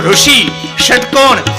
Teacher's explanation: ઋષિ વાળો ષ છે ષટકોણનો ષ છે એ બોલવો હોય તો મૂર્ધન્ય છે એ ટ ઠ ડ ઢણ ની જેમ બોલવી પડે ટ એમાં